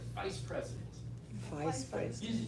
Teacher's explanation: the V is the same mouth but you have a voice